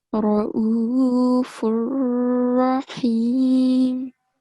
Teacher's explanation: First time when you read the word, it came across as a thick sound. However, ra with a fatha stroke should be pronounced with a thick sound.